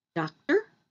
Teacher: the stress is on the first syllable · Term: syllable stress